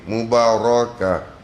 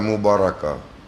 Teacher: Nak tentukan ra ni dia tafhim ke tidak, macam mana yang dikatakan dia ditebalkan, dia mesti dimoncongkan. Ra dia mesti dimoncongkan, menandakan bacaannya ditafhimkan.